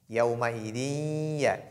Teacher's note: on fait l'assimilation al-idgham, on introduit nun qui se trouve dans tanwin, dans ya, et puis on fait ce qu'on appelle la nasalisation